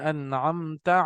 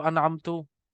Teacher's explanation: अन्अमता पढ़ा, अब अगर कोई पढ़ते इसको अनअमतु, यानी कि वो जबर की जगह उसने पेश पढ़ दिया